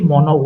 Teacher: সম্পূর্ণ বাতাস মুখ দিয়ে বের হতে পারে না, কিছু বাতাস নাক দিয়েও বের হয়, যার কারণে নাসিক্য ব্যঞ্জনের সৃষ্টি হয়।